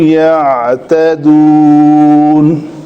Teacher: عین کو اپنے مخرج سے نکالنا ہے لیکن جھٹکا نہیں دینا اس کو